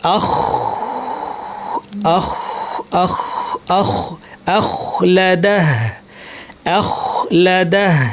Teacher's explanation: গইনের মতো একই জায়গায় কাছাকাছি কিন্তু বাতাস ছেড়ে দিতে হবে।